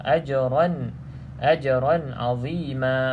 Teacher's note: pastikan ada sedikit lantunan pada huruf jim kerana dia termasuk dalam qalqalah